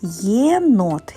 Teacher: єнот є означає два звуки ї і е